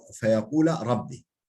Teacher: Feyakula rabbi şeklinde fethali olursa o zaman idgam olmaz